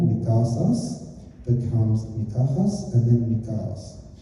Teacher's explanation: the S weakens over time between vowels. It first becomes an aspiration, a perf sound, and then it completely disappears by the 3rd century BC. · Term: intervocalic S loss